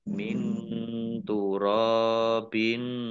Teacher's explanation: nun sukun bertemu dengan huruf ta bacaan iffa dibaca samar-samar